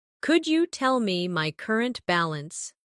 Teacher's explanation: Could you becomes could ya in faster conversation